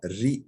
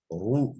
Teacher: Ri deyince esra olunca ince okunur ama ru, ra deyince ra kalın okunur.